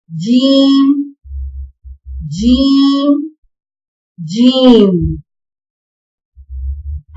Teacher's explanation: جیم، زبان کا درمیانی حصہ جب تالو سے لگتا ہے تو جیم ادا ہوتا ہے۔